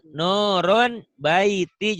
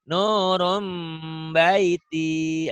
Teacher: Bunyi nun mati kan N. N-nya berubah menjadi M. Nun N jadi M ya. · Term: iklab